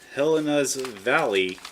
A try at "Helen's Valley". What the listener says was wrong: You said Helena. added Whole bunch of other letters to there. It's Helen's Valley. It's Helen's. Helens. Helen's.